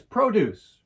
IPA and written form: ˈprɒdjuːs (produce)